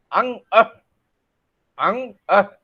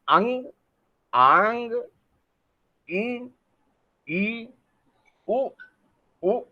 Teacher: प्राणवायु जो है वो क्या होती है, नाक और मुंह से दोनों से निकल रही है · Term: अनुनासिक ध्वनि